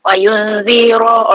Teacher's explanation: Wa yunziru ro tebal sebab baris atas. Rol lazi zi nipis, ada zi, ada 3 zal kat sini.